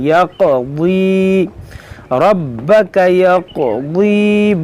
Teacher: دیکھیں یہاں پر بھی دیکھیں یا قاف زبر یاق، ضاد یا زیر ضی، یقضی، اس کو قاف کو قلقلہ کریں گے اور ضاد کو موٹا پڑھیں گے